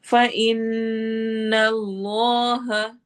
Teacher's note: नून पे गुन्ना होगा और इसमें जलाला हैवी होगा